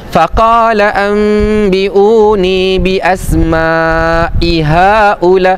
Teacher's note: Maksudnya dia baca mad jaiz munfasil yang dua harakat. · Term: mak jaiz munfasil